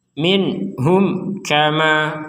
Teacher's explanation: lagiarum sebagaimana sebelumnya nun sukun bertemu ha kita baca dengan jelas mim sukun bertemu Kaf kita juga baca dengan jelas